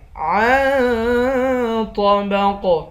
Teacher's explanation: عین کو نون کے ساتھ ملا کر نون پر اخفا کریں گے، طا اور قاف دونوں کو موٹا پڑھیں گے، آخر میں حروف قلقلہ ہے اور موٹا حروف بھی ہے، اس کو موٹا بھی کریں گے اور قلقلہ بھی کریں گے۔